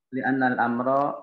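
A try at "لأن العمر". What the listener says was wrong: bukan amro, itu pakai ain itu. Umur. Li'anna al-umra atau umuro.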